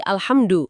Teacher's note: harusnya kan H tebal dari tengah tenggorokan. Kalau jadi H tipis dari bawah tenggorokan, wah itu fatal. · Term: ha tebel